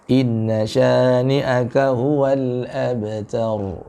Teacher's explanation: huruf ta-nya tipis, ra-nya juga tebal